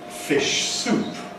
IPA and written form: ˌfɪʃ ˈsuːp (fish soup)